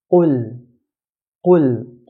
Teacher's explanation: Qaf, the articulation point of this letter is right at the back of the tongue near the throat.